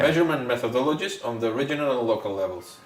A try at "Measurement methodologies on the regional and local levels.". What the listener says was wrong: You're rushing to the end. Measurement methodologies on regional and local levels. That sounds better because sometimes it sounds like you're just rushing to get to the end.